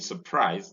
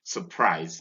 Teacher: So we don't say surprise, but we say surprise because the first syllable is weak and the schwa occurs there